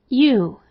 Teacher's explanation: Long U is made up of the sound of ya and then a long double O, oo.